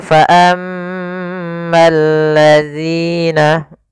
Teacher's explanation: alif lam yang ditulis tapi tidak dibaca sehingga ini langsung ke huruf lam yang ketiga ya Al ketemu lam maka bergabung menjadi lam yang ditasydidkan maka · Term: alif lam syamsiyah